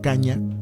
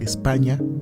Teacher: sonido nasal palatal que se pronuncia dejando salir el aire por la nariz y colocando la lengua en el paladar